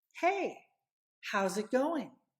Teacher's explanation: so you get that connection that flow how's it going and I don't really pronounce that g at the end of the word going